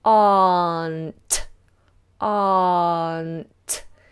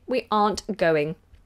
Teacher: letter R we open our mouth wide and do aren't aren't you see my tongue coming up to the N and releasing in the T